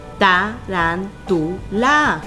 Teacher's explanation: nos damos cuenta que la sílaba tónica se encuentra en la antepenúltima sílaba y, recordando las reglas, es una palabra esdrújula y lleva tilde.